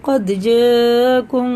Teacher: یہ مد جو ہے نا 4 الف کے برابر کھینچ کے پڑھتے ہیں، کیونکہ یہ مد متصل ہے، وہ منفصل ہے اور یہ متصل ہے.